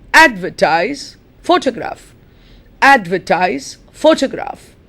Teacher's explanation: notice that the stress is on the first syllable